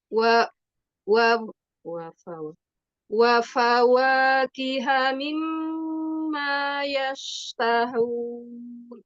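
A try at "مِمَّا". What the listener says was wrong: Di mim guna jangan ditekan tapi ditahan. Bukan mimma, bukan ditekan tapi ditahan. Mimma, sehingga tidak ada suara yang terjepit.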